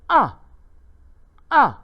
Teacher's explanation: Bunyi menurun dengan tajam dan pendek dari tinggi ke rendah. Tanda nada ialah satu garisan menurun. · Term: Nada keempat